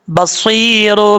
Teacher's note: صاد کے بعد یا مدہ ہے، ایک الف کی مقدار لمبا کر کے پڑھیں گے